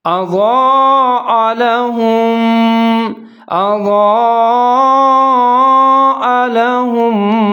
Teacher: کلما، آگے ہے اضاء لهم، حمزہ کے اوپر زبر ہے، ضاد کے اوپر زبر ہے، آگے مد آ رہا ہے، اس کو مد متصل کہا جاتا ہے، تو آپ نے اس کو 3 سے 4 سیکنڈ تک لمبا پڑھنا ہے